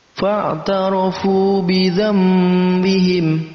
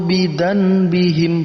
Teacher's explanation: Perhatikan ada perpindahan huruf yang tadinya nun mati kita bacanya mim. Fa'tarafu bidzambihim, bukan fa'tarafu bidzanbihim, bukan bidzanbihim, bukan, tapi dengan diganti menjadi mim. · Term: iqlab